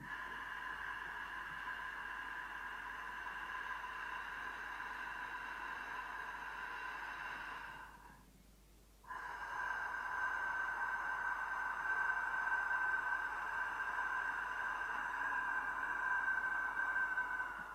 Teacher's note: avec la gorge légèrement contractée, émettant un son non vibré, un son soufflé